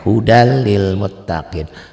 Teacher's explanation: artinya tulisan dan bacaannya berbeda tuh ditulis janganlah ada bunyi n-nya Hudan lilmuttaqiina dibacanya n hilang jadi l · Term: idgham bilagunnah